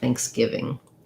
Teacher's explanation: my stress happens on my gi syllable of giving. And then again, I have another NG sound at the end, Thanksgiving.